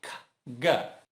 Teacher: A letra K, o som é K, sem voz. Se eu adiciono voz, G.